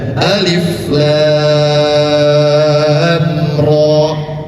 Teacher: Rnya dua harakat karena masuk kepada mad lazim harfi mukhaf mukhaoffaf.